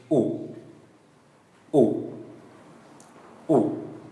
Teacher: again a short, low tone